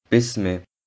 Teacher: Beim Aussprechen des Ba und des Mim öffnet sich der Mund und der Ton neigt sich zum Buchstaben I. Die beiden Buchstaben werden nicht gedehnt und sie sollten nicht wie Bi und Mi ausgesprochen werden.